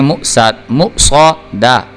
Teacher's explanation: اب دیکھیں، میم پیش حمزہ مو، صاد زبر صو، صاد جو ہے یہ حروف مستعلیہ میں سے ہے، اس کو پر کر کے پڑھنا ہے، جبکہ دال جو ہے یہ حروف قلقلہ میں سے ہے، اس کو ابھار کے پڑھنا ہے۔ مو صو دا، دال زبر دا، مو صو دا، دیکھیں مو صو دا، یہ بری کر کے نہیں پڑھ رہے، اس کو موٹا کر کے پڑھیں، مو صو دا، تا دو پیش تن، مو صو دا تن۔